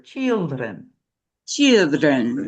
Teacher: The duration. I want you to hold that e sound a little bit longer.